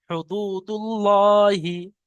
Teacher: এখানে হুদুদুল্লাহি পড়া যাবে না, কারণ আল্লাহ শব্দের পূর্বে এখানে পেশ এসছে, তাই আল্লাহ শব্দকে পুর করে পড়তে হবে, অর্থাৎ ল পড়তে হবে।